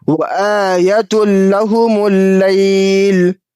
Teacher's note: تنوین کے بعد حرف ادغام میں سے لام ہے تو یہاں پہ ادغام تام کا قاعدہ بن رہا ہے اس لیے بغیر گنہ کیے ادغام کر کے پڑھیں گے